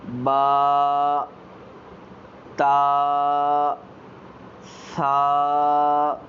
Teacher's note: آپ نے با کو ایک الف کے برابر لمبا کرنا ہے، یعنی با، تا، ثا، ایسے آپ نے اسے ادا کرنا ہے۔